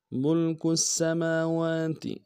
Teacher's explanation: سین کے اوپر تشدید زور دیں گے، میم کے اوپر کھڑا زبر ہے اور واو کے اوپر کھڑا زبر ہے، دونوں کو ایک مقدار میں کھینچیں گے، تا کو نرم سے ادا کریں گے۔